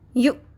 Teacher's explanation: یا پیش حمزہ یو، جھٹکے کی آواز کو کلیئر کریں